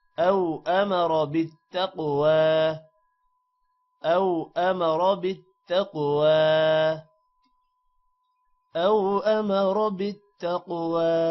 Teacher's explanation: بالتقوى قوف موٹا ہوگا اور قوف پر قلقلہ بھی ہے